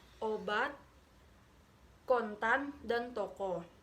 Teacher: vokal sedang belakang bulat vokal ini dibentuk dengan kedua bibir agak maju kedepan agak membundar serta lidah agak meninggi tetapi agak lebih rendah dan kurang bundar daripada Um misalnya obat